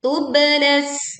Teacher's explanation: pantulkan bak sukun dengan suara yang kuat, tubalas sarair.